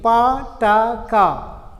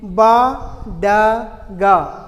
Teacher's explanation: Pa, ba, ta, da, ka, ga, these 6 are plosive sounds. Among the 6, the first 3, pa, ta, ka, are voiceless, and ba, da, ga are voiced in the plosives.